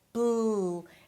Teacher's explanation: If you don't have the L in your language, you maybe say something like - brockchain and it sounds like an R. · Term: L sound